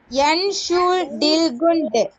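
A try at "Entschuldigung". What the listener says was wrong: குண்ட் இல்ல குங். GUNG என்ன சொல்ற? குங். என் ஷூல் டி குங்.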